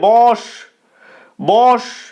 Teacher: একদল বিশিষ্ট শব্দ বা একাক্ষর শব্দ তো যদি একা শব্দ থাকে এই একাক্ষর শব্দের প্রথমের যে অটা থাকবে সেই অটা অ এর মতই উচ্চারিত হবে